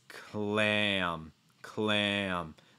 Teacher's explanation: you're going to feel your tongue sliding back and then you're going to add a slight breath out of your nose before the m